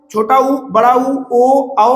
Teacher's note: इनको बोलने में हमारे जो है जीभ का पिछला हिस्सा सक्रिय रहता है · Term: पश्च स्वर